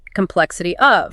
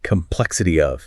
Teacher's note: how the Y at the end of complexity links directly and seamlessly into the O of of, creating a new phonetic bridge